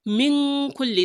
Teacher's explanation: You can't say min kulli because that is a nun sakina, which means you would make a gunna there. Min kulli, that is ikhfa.